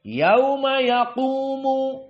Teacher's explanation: tidak flat tetapi naik dan juga tebal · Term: tafkhim